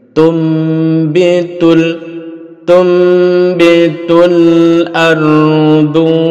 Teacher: ardu tun menjadi tum. Jadi ada huruf mim sebagai tanda bahwa nun ini diganti bunyinya menjadi mim